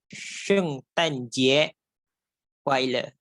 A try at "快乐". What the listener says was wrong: Yes, your 快 more air please. K, more air.